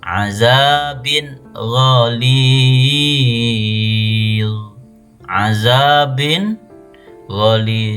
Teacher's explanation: Dibaca jelas. tidak dengung dan tidak samar-samar.